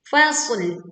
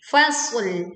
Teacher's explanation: Fasl, sodnya tebal, lamnya tipis.